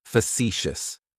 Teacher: The next adjective, and it's one of my favorites because, well, it kind of describes me, is facetious. Facetious has 3 syllables, and the stress is on that second syllable.